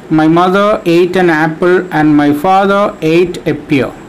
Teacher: Here we have an alternative stressed and unstressed syllable pattern. All even-numbered syllables are stressed and all odd-numbered syllables are unstressed.